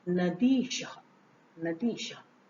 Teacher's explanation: जैसे नदी धन ईशः, तो नदी का ई हमने ई निकाल लिया तो नद बचा यहाँ। तो नदी का ई और ईश का ई, जब ये दोनों आपस में मिले तो ये दोनों मिलकर हो गए दीर्घ ई। और जब हम इस ई को इस नद के द में मिलाएंगे तो ये नदी हो जाएगा और शब्द बनेगा नद ई शह, अर्थात नदीशः, नदीशः।